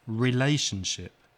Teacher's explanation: relationship four syllables the second syllable is stressed